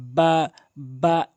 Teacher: এরপর আসুন খ, হলকের শেষ থেকে এভাবে সাউন্ড করে খ একালিফ টেনে পড়বেন। বা, দুই ঠোঁটের ভেজা অংশ মিলিয়ে বা একালিফ টেনে পড়বেন।